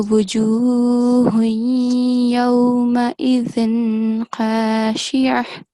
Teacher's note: when you connect this ha with the noon tanween and this ya mushaddad, make sure you make nasal sound